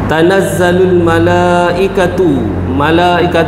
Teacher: panjang dia 4 5 dan 6 harakat ya mad wajib muttasil